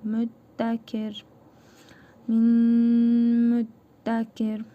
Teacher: İdğamı məalunə qaydasına görə cəzimli nun hərfini burnumuzda tələffüz edərək bir hərf miqdarı uzadırıq və mim hərfini şəddəli tələffüz edirik. Mim m dəl hərfinin üzərində şəddə var.